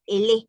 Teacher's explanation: Termina en la misma vocal, inicia en la misma vocal, solo pronunciamos una sola vez. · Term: una sola expresión